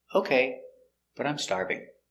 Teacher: intonation goes up with okay because it's before a comma okay but i'm starving positive idea i'm starving intonation goes down